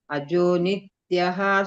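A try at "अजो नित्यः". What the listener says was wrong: ಅಲ್ಲಿ ನೀವು ಅಜೋನಿತ್ಯ ಅಂತ ಹೇಳಬೇಡಿ ನಿತ್ಯ ಸ್ವಲ್ಪ ಹ ಬರಬೇಕು ಅಷ್ಟೇ ಉಳಿದಿದ್ದು ಸರಿ ಇದೆ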